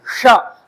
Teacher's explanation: षट्कोण वाला श होता है आपका मूर्धन। तो जब जब जीभ ऊपर टर्न होकर मूर्धन में लगती है श तब निकलता है